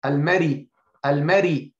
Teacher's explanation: So, Al-Mar, when it has third of the kasra, as if it has a kasra, so the ra will be light.